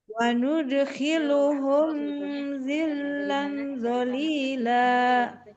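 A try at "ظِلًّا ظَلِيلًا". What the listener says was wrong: Nah, ikhfanya tebalkan Ibu. Willang walila. Karena kan dia berhadapannya dengan huruf yang tebal. Dengung ikhfa, dengung ikhfanya ikut tebal.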